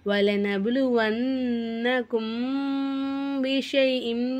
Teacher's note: எஹுஃபாவே சபவி சட்டத்தை ஃபாலோ பண்ணணும். அதாவது மீமே சாக்கினா மூக்கால மறைச்சி குன்னா செஞ்சு ஓதணும். வலனப்லுவன்னகும் பிஷைஇம் வன்னக்கும் அப்படின்னு சொல்லிட்டு இந்த இடத்துல மீமே சாக்கினா நம்ம குன்னா செய்யணும்.